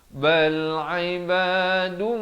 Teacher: Daripada dun jadi dum, baru masuk mukramun. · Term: idgham bi gunnah